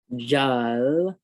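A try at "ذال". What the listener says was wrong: Okay, don't say ja because that's like too much power on the on the mouth there. Remember, it's like the word the. When you say the, just like the word the.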